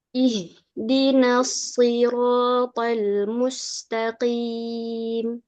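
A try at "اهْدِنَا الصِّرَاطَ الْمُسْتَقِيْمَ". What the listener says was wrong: To, bukan toel, to. To. Itu enggak bergerak kan mulutnya kan?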